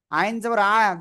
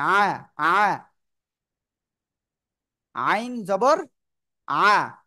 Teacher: গলাটা চেপে উচ্চারণ করতে হবে